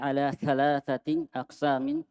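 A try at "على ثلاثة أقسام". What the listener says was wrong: Thalathati tidak ditanwin.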